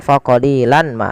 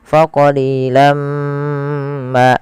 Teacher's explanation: Maka jangan lagi dibaca faqalilan ma, tapi langsung masukkan ke mim karena ia bacaan idgham bi gunnah. Kemudian setelah kita masukkan tanwinnya ke mim ditahan faqalilam ma.